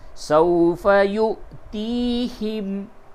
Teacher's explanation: یا کے بعد حمزہ ہے، یہاں پہ جھٹکا ہوگا